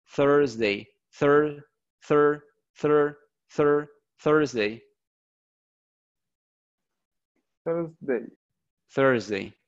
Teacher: Pongan la lengua en medio de los dientes sacando el aire. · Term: el sonido de la TH